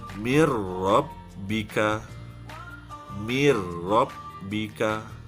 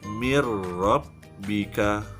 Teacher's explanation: Saya idghamkan sebutan nun ni ke dalam ra, jadi bunyi ra. Mir. Tak ada bunyi nun. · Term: idgham bila gunnah